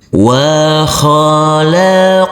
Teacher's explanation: Huruf nun kita baca panjang dengan panjang 2 harokat karena di atas huruf nun ini ada huruf alif kecil yang berdiri tegak lurus.